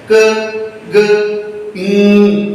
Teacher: जिसमें हमारी back of the tongue soft palate से जाकर टच होती है और साउंड प्रोड्यूस होती है, तो ऐसी साउंड को हम वेलर साउंड कहते हैं।